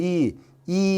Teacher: 혀가 좀 위에 있다는 느낌이 드시나요? 앞에 있죠? 그 다음에 입술이 평평하죠.